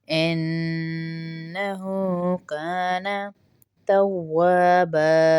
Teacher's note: اور ہو کو تھوڑا سا ایک الف کے برابر کھینچیں گے کیونکہ الٹا پیش ہے